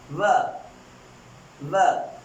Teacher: my upper teeth and down lip, it is touching. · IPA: /v/